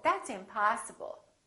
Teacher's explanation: we prolong the a in the stress syllable